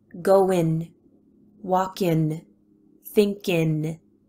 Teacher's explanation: remember that the ing, ing, is so often cut short to in